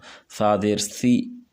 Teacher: تو اوپر زبان کی نوک کو دانتوں کے ساتھ لگانا ہے اور پھر ادا کرنا ہے، تو یہ سا ادا ہوگا